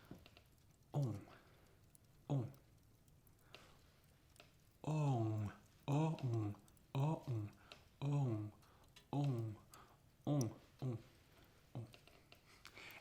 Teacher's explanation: Then you have this sound, on, O-N. Yeah, it's like O, like in the word adore, and then you have the nasal intervention.